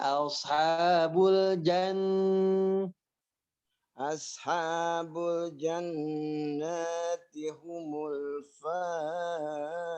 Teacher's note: Yang jannati tahan dulu lebih lama nunnya.